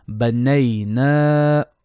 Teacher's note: Leen on the first noon and mad asli on the second noon. Banay, short beat. Na, long beat.